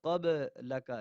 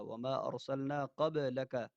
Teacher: یہاں پہ دیکھیں با کے اندر قلقلہ ہو رہا ہے، قبلک آواز کو روکا نہیں جائے گا